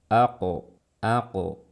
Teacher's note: saat melafalkan qalqalah karena qaf bersifat isti'la, maka lafalkan qalqalahnya dengan suara yang tebal. Jangan seperti ini, aqe ya, tapi aqo.